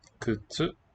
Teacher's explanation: Kutsu with a voiceless vowel in the first syllable.